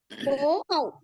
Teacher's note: आ plus वो से बनता है, राइट। इनका स्थान है कंठ और ओष्ठ से, इनका उच्चारण होता है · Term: कंठ्योष्ठ